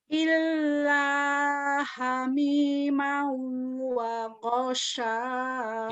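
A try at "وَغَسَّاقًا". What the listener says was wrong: Ijak kecil, bukan wagosak. Wagos, jamber, tasdid. Illa hamimau wa ghassaqa.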